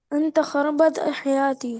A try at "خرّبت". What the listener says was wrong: خربت नहीं बेटे कहेंगे खर्रबत not खरबत खर्रबत कैसे कहेंगे खर्रबत ओके तुमने मेरी जिंदगी खराब कर दी انت خربت حياتي you spoiled my life ये स्टोर में रख दो